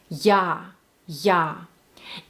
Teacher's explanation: It has to be very open, kind of rounded.